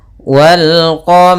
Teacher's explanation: rnya tebal karena ro berharakat fathah. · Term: ro-nya tebal